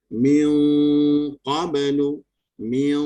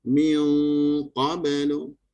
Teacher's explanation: Masa sebut min tu dia tidak menekan huruf qaf. Bila nak sebut qaf baru pergi rumah qaf. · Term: ikhfa